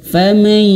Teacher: Bukan hanya sekedar ditahan tapi juga harus dimasukkan ke hidung.